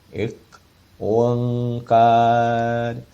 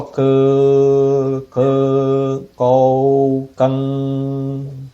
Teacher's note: K, é com a língua lá atrás